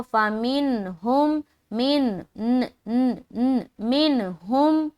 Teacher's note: تو اظہار کریں گے یعنی کہ ظاہر نون کی آواز کو